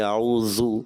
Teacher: اعوذ میں ذال کی ادائیگی اعوذ ایسے محسوس ہوا، ذال زا کی طرح محسوس ہوا